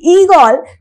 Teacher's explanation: যেমন আমরা যদি বলি ইঁদুর, ইঁদুর শব্দটার মধ্যে আমরা উচ্চারণটা দেখো কম, মানে ই এর উচ্চারণ মানে প্রেসার নেই, হালকাভাবে উচ্চারিত হচ্ছে। এবারে আমি যখন বলছি ঈগল, তখন ইটায় একটা প্রেসার পড়ছে এবং সেই জন্যেই সেটা হয়ে যাচ্ছে, চাপ যেহেতু পড়ছে সেই জন্য সেটা হয়ে যাচ্ছে দীর্ঘ ই।